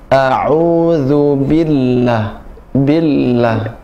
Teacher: La-nya bertasydid, jadi bi-nya tekan.